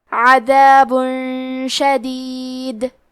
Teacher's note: پھر حرف شین آتا ہے. کلمت شدید، شین حروف الاخفاء میں سے ہے تو ہم یہ حکم کو غنہ کے ساتھ ادا کریں گے